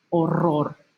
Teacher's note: notice that I'm rolling the first one but the last one not so much it's just kind of dropping